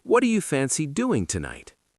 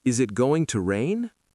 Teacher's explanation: Intonation usually falls for open questions and statements and usually rises for yes-no questions.